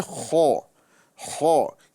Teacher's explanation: خو یہ اوپر والی حلق سے ادا ہوتا ہے۔ حلق میں اور کاف کے مخرج میں بہت فرق ہے، کیونکہ کاف کا جو مخرج ہے اس زبان کی جڑ اور نرم تالو سے ادا ہوتا ہے۔